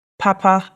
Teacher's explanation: That has two high tones